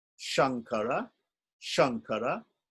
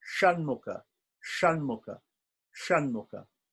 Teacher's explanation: So there's sh, sh, and sh, sh, and sh. One is the tongue is flat, the first one. The other, the tip of the tongue is pulled back, pointing to the top of the head.